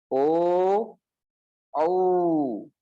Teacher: कंठोष्ठम, इसमें कंठ और ओष्ठ दोनों का प्रयोग होता है। ओ औ दोनों ही दीर्घ है, ध्यान रखना।